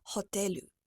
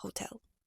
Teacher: Maybe you add a vowel after the last consonant so that you say hotelu rather than hotel.